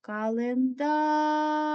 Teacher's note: гукаємо слово календар наголос падає на останній голосний